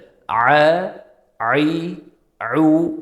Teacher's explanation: Ya'ni siz bunda ayn harfini emas, o'sha aynan halqumning o'rtasini siqib qo'yaverasiz. Aynan shu siqib qo'yaverishlikda ayn harfini qanaqadir tovushi hosil bo'ladi.